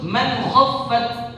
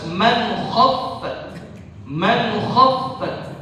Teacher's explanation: di sini bertemu kha jadinya izhar. Jadinya izhar. Jadi enggak ada dengung di situ. Ya, dibaca jelas man khaffat.